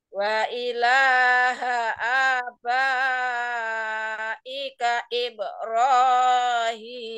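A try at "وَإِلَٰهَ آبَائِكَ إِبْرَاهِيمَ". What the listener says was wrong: Hati-hati. Ro-nya kepanjangan Bu, kepanjangan ro-nya.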